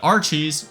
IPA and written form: 'ɑrt͡ʃiːz (AR-cheese)